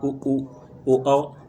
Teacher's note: जिन स्वरों के उच्चारण में ओठ गोलाकार होते हैं वे वृत्तमुखी स्वर कहलाते हैं